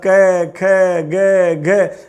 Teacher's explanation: बिना जिह्वा को तालु के स्पर्श, मूल के स्पर्श कराए क वर्ग नहीं बोल सकते।